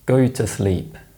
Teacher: Where the oo sound exists in function words, it's often replaced with the schwa sound in connected speech. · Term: weak form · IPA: /ə/